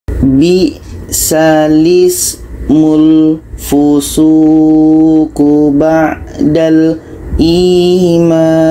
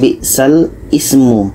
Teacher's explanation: Hamzah ini yang asalnya berbaris di bawah kita pindahkan kepada huruf lam. Jadi sekarang yang berbaris di bawah ini bukan hamzah lagi, tetapi adalah lam.